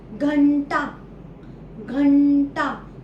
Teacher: घ अक्षरानंतर एक आवाज येतो जो नाकातन येतो घंटा घंटा म्हणून आपण अनुसार कशावर दिला ग वर दिला ठीक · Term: अनुस्वार